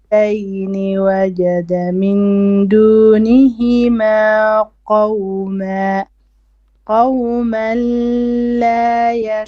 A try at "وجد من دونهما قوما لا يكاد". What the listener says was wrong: Too long. No, you don't stretch the lam shadda that long.